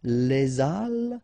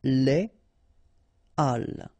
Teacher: you won't have the possibility to make the liaison between your article and your word. So in that case, you shouldn't make the liaison, so you shouldn't say les halles, but you should say les halles. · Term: H aspiré